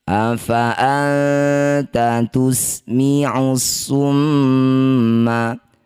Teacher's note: Afa anta sama dengan yang tadi ya nun sukun bertemu ta disebut bacaan namanya ikhfa aqrab. Bunyi nun sukun didengungkan dua harakat ketika dengung lisan kita sudah bersiap di huruf ta.